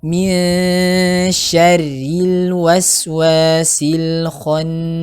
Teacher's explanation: ada hukum ikhfa di situ, nun sukun ketemu shin, jadi dibaca tipis juga ya